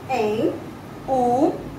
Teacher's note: जिसके उच्चारण करने में नाक और मुंह दोनों का हम इस्तेमाल करते हैं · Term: अनुनासिक स्वर